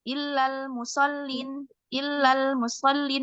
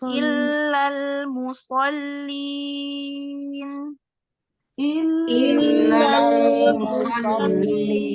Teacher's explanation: al musin ya hati-hati ya banyak huruf lam ini di sini ada lam tasydid yang pertama kemudian lam sukun kemudian ada lam tasydid lag tadi kita ingat bahwa lam itu punya sifat tawasud atau setengah setengah mengalir